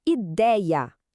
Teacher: A sílaba forte é o dei, a penúltima. Ou seja, era uma paroxítona.